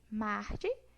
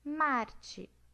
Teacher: A gente também pode ter fricativa e TEP.